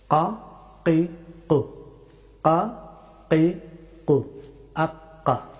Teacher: কাফ হরফটি উচ্চারিত হয় একেবারে জিহ্বার একেবারে শেষের অংশ থেকে এবং উপরের তালু, এখান থেকে ছোট জিহ্বার কাছ থেকে কাফ হরফটি উচ্চারিত হয়।